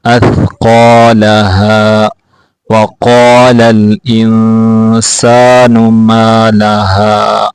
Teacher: قاف کو موٹا کر کے پڑھیں گے. وقال قاف کو کھینچ کے پڑھیں گے.